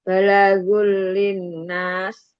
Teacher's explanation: Linnas gunah musyaddadah dibaca ditahan dengungnya 3 harokat di rongga hidung merupakan tingkat gunah pertama, gunah akmal.